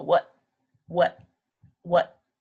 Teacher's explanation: what is wrong a lot of people just say what and they don't make a t sound but they kind of just put their tongue behind their teeth